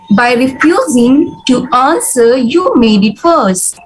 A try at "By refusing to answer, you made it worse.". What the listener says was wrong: You paused after refusing. You said by refusing to answer, there should be no pause.